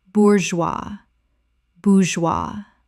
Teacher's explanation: The G makes a zut sound and the S is completely silent.